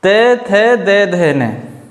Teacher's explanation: दंत मतलब जीभ दांतों को इसमें स्पर्श करती है।